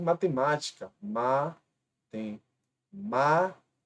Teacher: a anti penúltima também é a mais forte portanto ambas proparoxítonas